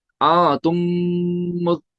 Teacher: मीम साकिन के बाद दूसरा मीम आ गया, यहाँ पे गुना करेंगे। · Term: इदगाम शफवी